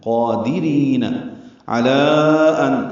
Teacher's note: علی میں مد منفصل ہے، کھڑا زبر کے بعد حمزہ آنے کی وجہ سے ہم اسے 4 حرکات لمبا کرتے ہیں